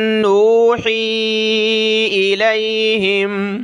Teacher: نون پر ناک میں آواز پیدا کی